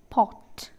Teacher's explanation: Jaw, pot എന്ന് പറയുമ്പോൾ fully open ആണ്. So the vowel is called as a back open rounded vowel. Back vowel ആണ്, back of the tongue ആണ്, raise ആയി നിൽക്കുന്നത്.